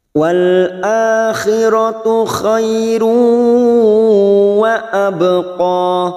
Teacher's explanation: ada huruf ba sukun qalqalah sugro karena mati asli di tengah kalimat · Khairu ada duma tanwin dumatain yang bertemu waw, namanya idgham bigunah, siap masuk dan mendengung, masuk ke huruf waw dan ditahan selama 3 harokat.